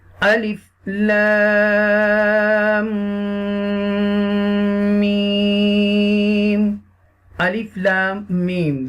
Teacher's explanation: They both have long mud. You will stretch equal to 5 alifs